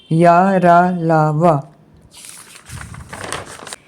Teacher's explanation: और अंतस्थ व्यंजन जिनका उच्चारण स्वर व्यंजन मध्य होता है। और कंठ तालु मूर्धा दंत ओष्ठ पूरा स्पर्श नहीं होता उन्हें अर्ध स्वर या अंतस्थ व्यंजन कहते हैं।